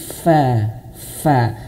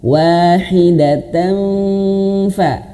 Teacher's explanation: Pak ya, bibir bawah, perut bibir bawah menyentuh ujung gigi seri atas. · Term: huruf fa